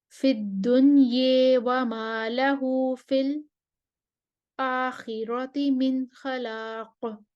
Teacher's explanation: خلاد جو ہیں وہ امالہ لائیں گے اور سکتہ کریں گے